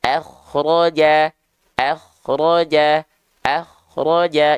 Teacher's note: dibaca tebal contoh kalimatnya sama ya Tuh akhroja akhroja akhroja jadi kalau dia dibaca tebal caranya gimana diangkat bagian pangkal lidah kita · k sukun yang didahului oleh huruf berharakat fathah k sukunnya dibaca tebal